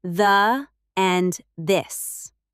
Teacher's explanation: the voiced th in the and this. Tongue between teeth.